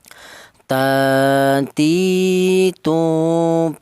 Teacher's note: Huruf ta ini keluarnya huruf berasal dari ujung lidah menyentuh pangkal gigi seri atas